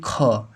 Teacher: जैसे ही आप ख बोलेंगे तो आपके मुंह से ज्यादा हवा निकलेगी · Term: महाप्राण